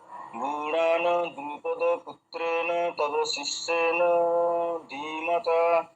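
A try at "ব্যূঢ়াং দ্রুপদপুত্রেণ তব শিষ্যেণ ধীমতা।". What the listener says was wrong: হ্যাঁ, হচ্ছে কিন্তু একটা জিনিস খুব লক্ষ্য রাখবেন, যেখানে অনুস্বরের ন পড়লো সেখানে যেন ন এমন উচ্চারণ যেন না হয়, এটা এমনি হলন্ত দেওয়া রয়েছে, মানে এটা অর্ধেক উচ্চারণ, ইউ ঢান ঢান, ঠিক আছে।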